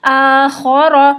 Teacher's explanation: متحرک حالت میں بھی اس میں خرخراہٹ آتی ہے، تو خرخراہٹ کا خیال رکھیے گا۔